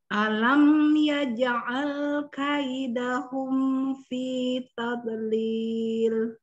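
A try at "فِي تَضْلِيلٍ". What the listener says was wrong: Huruf dhad tidak boleh memantul. Istitalah. Yuk, dicoba lagi.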